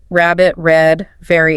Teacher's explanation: You curl your tongue back toward the roof of your mouth, but you don't actually touch it. Lips are a bit rounded. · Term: American R